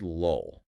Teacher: The first L is a light L. You pronounce it at the front of your mouth, right behind your teeth. >> Right. But that final L is a dark L.